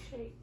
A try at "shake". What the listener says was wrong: Shake. Good job.